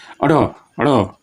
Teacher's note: उत्क्षिप्त मतलब ऐसा, मतलब जो फेंका हुआ लगता है